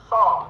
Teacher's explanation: Kan gigi seri kan yang paling depan nih, gigi seri. Nah, ujung lidah kita sentuhkan kepada antara gusi dan giginya itu di belakang tuh